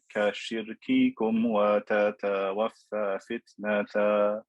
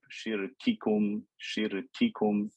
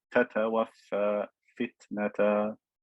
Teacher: take care of the sifa of shiddah, the abrupt sharp sound in the kaf and the ta